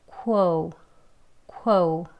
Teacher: 이 발음은요, O. 예, O 하지만 소리는 O지만요, 입이 조금 벌어진 상태예요. O 하고, O. 조금만 작아지게 O 한 다음에 발음을 끝내기 때문에요. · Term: 이중 모음